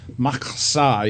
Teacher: You kind of spit in the back of your throat